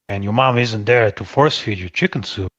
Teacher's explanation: I'm hearing at least four stresses here. It's almost like every other word.